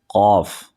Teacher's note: ٹھیک ہے، تو جو دونوں ہی قاف ہمارے زبان کی جڑ سے ادا ہوتے ہیں، لیکن تالو کے جب نرم حصہ سے لگائیں گے یعنی تھوڑا سا نیچے لگائیں گے تو قاف بڑا والا ادا ہوگا · زبان کی جڑ اور تالو کے نرم حصہ سے ادا ہوتا ہے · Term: حروف لہویہ